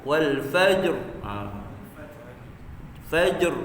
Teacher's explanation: Dia ada qalqalah terus sambung pada dengan ra yang mati.